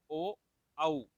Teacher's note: ये दो स्वर हैं केवल जिनका उच्चारण करते समय हमें कंठ और ओष्ठ की सहायता लेनी पड़ती है। इनको कहते हैं कंठोष्ठ।